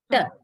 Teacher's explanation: you slightly roll your tongue backwards and you are touching the area, not the alveolar ridge, the area after the alveolar ridge.